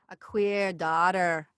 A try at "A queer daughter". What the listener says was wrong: Get that R even stronger on queer. That queer. But if this works on it, so think about you're almost like hooking on the R. Queer daughter.